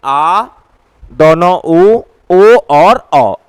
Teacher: जिन स्वर वर्णों का उच्चारण जिव्या के पश्च भाग से होता है उन्हें पश्च स्वर कहा जाता है